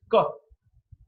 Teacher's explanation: K is voiceless. The vocal cords are held apart from each other, wide apart, and the air passes through. There's a lot of, when the air passes, there is no vibration.